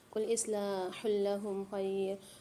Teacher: اصلاح لهم خیر میں دو پیش کی تنوین کے بعد لام مشدد آ رہی ہے۔ یہاں پر قاعدہ ہوگا ادغام بلا غنہ کا، یعنی یہاں پر ہم غنہ نہیں کریں گے، ادغام کر کے پڑھیں گے۔